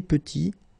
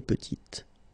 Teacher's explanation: Final T is not pronounced. And then when you add this E at the end, you get the sound T, T, petite.